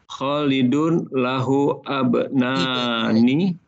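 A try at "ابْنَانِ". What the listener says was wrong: Kalau mau disukunkan, kalau mau diberhentikan ibnani. Kalau mau lanjut lahu bnani. Karena ini alif ya. Ini bukan fathah di sini. Jadi ini sukun mati ya. Jadi bacanya lahu bnani atau lahu ibnani begitu.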